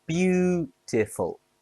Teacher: Beautiful has three syllables. Stress on be.